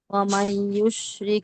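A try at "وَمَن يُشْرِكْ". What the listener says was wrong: না না, গুণ না করেন, নাবর ইয়ে ইদগম না শেষ। না হয় না তো, গুণ স্টে করতে হবে, গুণ মানে স্টে করতে হবে।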